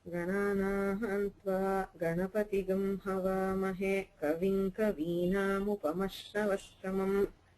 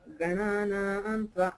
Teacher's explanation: the Ga itself starts at a lower pitch. It is called Anudatta.